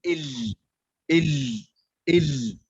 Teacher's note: اللام من بداية اللسان إلى آخره مع أضراس الثنايا العليا، أضراس العليا، يعني أضراس العليا، فنقول ال هكذا.